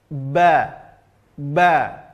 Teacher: huruf ba yaitu menempelkan kedua bibir menempelkan kedua bibir disertai dengan penekanan